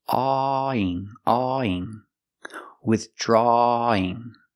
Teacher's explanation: It's pronounced withdrawing. We have to link the sound aw with the sound e in ing.